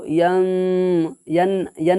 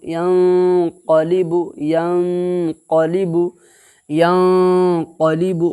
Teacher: एक अलिफ के बराबर गुन्ना के साथ छुपा करके अदा करेंगे। जैसे यंक़लिबु, यन यन नहीं बोलना, यंक़लिबु, या नून ज़बर यन, क़ाफ़ ज़बर क़ा, लाम ज़िर ली, बा पेश बु, यंक़लिबु, यंक़लिबु, यंक़लिबु।